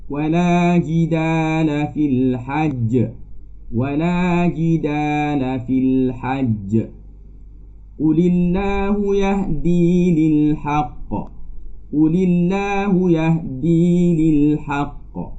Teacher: Cara bacaannya, bunyi lantunan yang lebih kuat ketika menyebut huruf qalqalah ketika waqaf ini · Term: qalqalah akbar